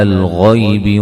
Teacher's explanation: غین کو موٹا ادا کریں گے، غی یا لین ہے